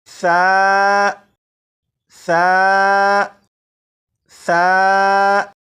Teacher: زبان کی نوک اوپر کے سامنے کے 2 دانتوں کے سرے سے لگا کر پڑھیں گے تو اس حرف کی سی ٹی کی آواز ختم ہو جائے گی۔ اب اس حرف کو پڑھنے کے لیے آپ صرف ایک بات پر توجہ دیجیے گا، وہ یہ کہ زبان کی نوک اوپر کے سامنے کے دانتوں سے لگانے کے بعد اس حرف کو پڑھے گا تو یہ حرف بالکل صحیح پڑھا جائے گا۔